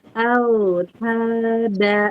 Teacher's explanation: Dari pangkal lidah ditempelkan ke pangkal gigi seri atas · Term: dal